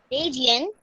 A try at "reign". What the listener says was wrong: what is region? The spelling of region is Region. This is Reign.